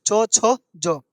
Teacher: चो छो जो कहाँ से बोला जाता है? तालु से बोला जाता है।